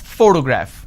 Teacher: so in this case this particular word has three syllables and I pronounce this as photograph which means I'm stressing on the first syllable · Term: word stress